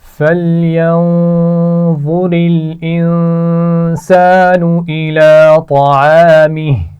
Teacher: انسان نون پر غنہ ہے، اس کے بعد الف مدہ ہے، اور الا کھڑی زبر ہے، اس کو بھی کھینچ کر پڑھیں گے. طعامی طا کو موٹا پڑا جائے گا، عین کے مخرج کو واضح کرتے ہوئے پڑھیے، اور الف مدہ بھی ہے یہاں پر.